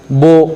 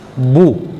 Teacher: इसको मारूफ पढ़ना है, मजहूल नहीं पढ़ना